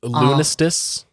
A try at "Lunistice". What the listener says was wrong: No, Lunistice, because there's an N there.